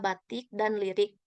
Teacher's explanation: direalisasikan sebagai bunyi I besar apabila berada pada silabel tertutup atau silabel berkoda